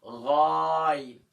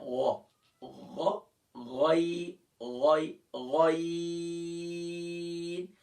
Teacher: غین کو ادا کرتے وقت ہم اسے فل ماؤتھ کریں گے